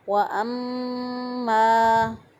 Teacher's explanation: ایک الف کے برابر گنہ کی آواز کو ناک میں ٹھہرا کر ادا کریں گے